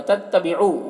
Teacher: واو مدہ ہے، ایک الف کے برابر کھینچیں گے